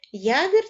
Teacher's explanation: Вона стоїть на початку слова тому позначає два звуки й м'який приголосний та а голосний